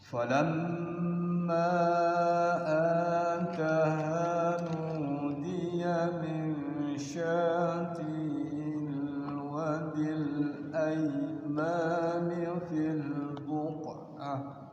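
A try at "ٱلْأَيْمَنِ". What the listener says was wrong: Ya, sekali lagi, maknya pendek ya, aimani langsung, min syati'il wadil aimani fil buq'ah, boleh di situ.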